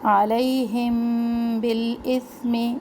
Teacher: میم ساکن کے بعد با، یہاں پہ ہم رکیں گے، اخفاء شفوی ہے یہ، 1 الف کے برابر رکیں گے